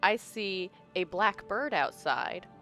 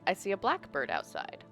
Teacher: one of them I'm saying a bird that is black, and the other I'm saying a blackbird, one word, because the stress is different